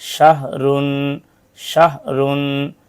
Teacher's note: ह की आवाज बगैर रगड़ के नरमी से निकलती है · ہا کی آواز بغیر رگڑ کے نرمی سے نکلتی ہے